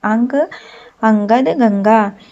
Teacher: अनुस्वार के उच्चारण में श्वास केवल नाक से निकलती है